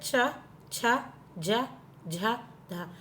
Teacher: जब आप चा बोल रहे हैं तो आपकी जीभ आपके तालू से लग रही है, जो आपके ऊपर वाले टीथ होते हैं ना उसके ऊपर लग रही है तालू से। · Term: तालव्य